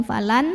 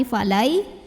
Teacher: nun sukunnya dileburkan ke ya disertai dengungan. Jadi bukan falan tapi falai dan tahan. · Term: idgham bighunnah, idgham bi gunnah